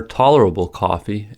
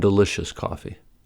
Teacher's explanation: tolerable coffee has three unstressed syllables between the two stressed syllables and delicious coffee only has one so the unstressed aables in the first phrase are spoken faster